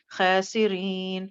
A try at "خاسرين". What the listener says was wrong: اس کو خا کو موٹا کریں.